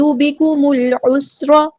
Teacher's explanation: میم کو ہم نے لام کے ساتھ ملا دینا ہے، حمزۃ الوصل ڈراپ ہو جائے گا. لام یہاں پہ لام قمری ہے، اس کو ہم ظاہر کریں گے. · عین کو وسطی ہے لیکن زور سے ادا کریں گے. سین کی سٹی ہم واضح کریں گے